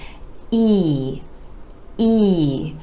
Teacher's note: our next four letters have the same vowel sound e e the sides of the lips retract just a bit for this sound and you want to give it more stretch more duration and a little more energy